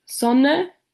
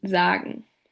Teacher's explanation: the alveolar fricative is present in the word Sonne, while its voiced counterpart z appears in sagen